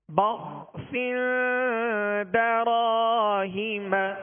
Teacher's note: ہا کے نیچے زیر اور میم پر زبر، ان دونوں حرکات کو کھینچیں گے نہیں · یہاں با ہے، با کے آگے خا ساکن ہے، خا کو پر پڑھیں گے اور اس کا سکون ہلنے نہ پائے. سین کے نیچے دو زیر کی تنوین، آگے دال حروف اخفا میں سے ہے، یہاں اخفا کا قاعدہ لگے گا اور اس میں غنہ کر کے پڑھیں گے.